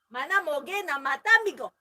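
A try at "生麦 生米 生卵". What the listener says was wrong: It's not mana, it's nami, Nami is raw.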